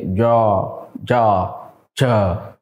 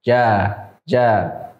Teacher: Kita mengucapkannya tipis karena sifatnya istifal dan infitah